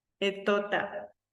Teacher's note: Se come la P, etota, ¿no es cierto? Y no dice bien la L, no dice pelota.